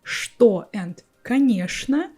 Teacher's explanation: for me, only these two words, что and конечно, will be pronounced with sh sound.